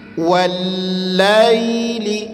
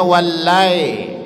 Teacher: wallaili tanpa ditekan ya tanpa menekan kemudian bunyikan vokalnya ke huruf i